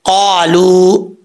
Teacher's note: قاف حروف مستعلیٰ میں سے ہے، پر پڑھا جائے گا. آگے الف ہے، 1 الف کی مقدار اس کو لمبا کریں گے.